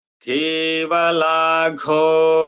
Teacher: घ यहाँ महाप्राण है।